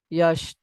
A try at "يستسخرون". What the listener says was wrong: This is not sheen.